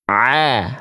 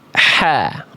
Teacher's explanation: kalau ain dilafalkan nekan tanpa nafas. Kalau ha nekan kayak ain tapi dikasih bocor nafas ngalir udara. A tanpa nafas.